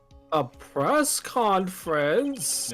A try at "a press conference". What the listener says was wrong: No, you have to say it in your lower register, monotone.